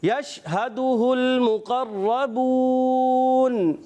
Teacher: را پر زبر آنے کی وجہ سے را کو بھی پر رکھیں گے, اور را پر تشدید آ گئی ہے اور اس کو رک کر ادا کریں گے.